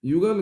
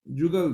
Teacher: अवधि में ण के स्थान पर न का प्रयोग मिलता है तथा य के स्थान पर ज का